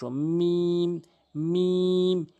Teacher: মিম, সহজ উচ্চারণ, দুই ঠোঁটের শুকনো অংশ